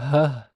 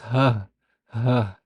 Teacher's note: your vocal cords are wide open and they allow all the air out without any vibration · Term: voiceless glottal fricative